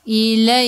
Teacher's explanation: Matikan dengan huruf kaf. Kaf sifat hurufnya hamas kena ada sedikit sahaja angin.